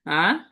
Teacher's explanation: second টোনটা, second second টোনটাকে নিচ থেকে উপরে উঠবে এরকম, রাইজিং টোন